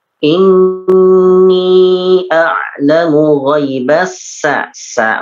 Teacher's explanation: sin biasa, bukan sya ya, jadi bukan sya tapi sa ya